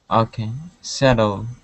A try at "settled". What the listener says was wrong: Okay, give me a D at the end. Right now you're saying the root word, which is settle. with the ed ending, we need only that D. Instead of saying settled, okay, you had said settled.